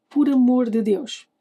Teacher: It sounds like the de has almost vanished. But it hasn't. We reduce it. We don't drop it completely.